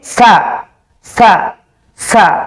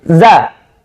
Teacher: Sa, ada udara. Za, tidak ada.